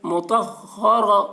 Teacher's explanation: کو جلدی پڑھیں، تھوڑا بھی نہ کھینچیں، مطہ، را زبر را، را کے اوپر زبر ہے اس لیے را کو پر پڑھیں گے